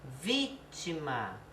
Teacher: não é má, que é a última, não é o ti, que é a penúltima, é o vi, que é a antepenúltima.